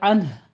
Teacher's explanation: نون ساکن کو آپ نے جلدی پڑھنا ہے، اظہار حلقی ہے اور ہا کی ساؤنڈ لانی ہے